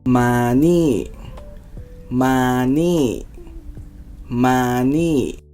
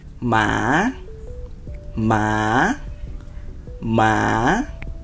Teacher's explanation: The word มา sits flat on a mid tone, but you're excited, so you call out and lift your voice at the end, the way you would in English.